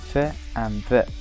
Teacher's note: They can be brought into contact with the upper front teeth as in the sounds f and v.